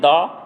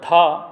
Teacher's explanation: घोष में दा अल्पप्राण है और धा महाप्राण है